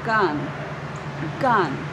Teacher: Gan is the word, and it was stressed in this sentence